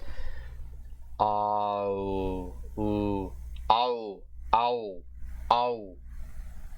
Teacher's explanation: the front to back, open to close, unrounded to rounded, diphthong